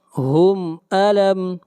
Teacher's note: میم کے اوپر اظہار کریں گے، میم ساکن کے بعد نہ میم ہے اور نہ با ہے